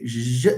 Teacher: J is not alveolar, it's palatal. So it's not anterior.